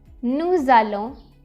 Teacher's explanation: the s sound of nous and the a sound of allons merge together to become z. Nous allons. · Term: merge the sounds together